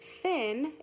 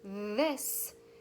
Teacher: if we say the word thin it is unvoiced and it's quiet if we say the word this it's our voice is turned on and it is voiced